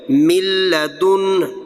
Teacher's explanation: تو نون اور لام آپس میں مل رہے ہیں تو یہ قریب المخرج ہے، اس لیے ادغام متقاربین